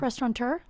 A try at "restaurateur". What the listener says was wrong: It's spelled restaurateur. There's no N, which Restaurateur. That's what the fucking word is.